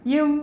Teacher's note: மேல்வாய் பல்லை கீழ் உதடு பொருந்துவதால்